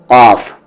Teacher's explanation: काफ जबान की जड़ तालू के नरम हिस्से से मिलाएंगे यानी जो ऊपर वाले तालू है उसके नरम हिस्से से मिलाएंगे